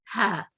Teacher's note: ہا یہ بالکل نچلے حصے سے ادا کی جاتی ہے